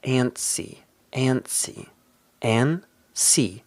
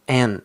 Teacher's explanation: stress is at the beginning